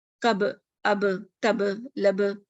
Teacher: the makhraj lip is closed when pronounced ba sakin. In order for it to be audible, the lips have to be slightly parted without giving it a haraka. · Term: قلقلہ